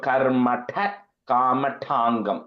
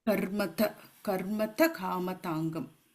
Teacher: Yeah, because first when you said it was like a ta, I heard a th sound. There's no h in that. This is a t ta. · It is like it's like the second ta in Sanskrit, which is it is a little bit of an emphasis ta